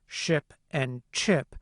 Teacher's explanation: sounds like [ʃ] and [tʃ] as in “ship” and “chip”, which we earlier described as post-alveolar, or alveopalatal.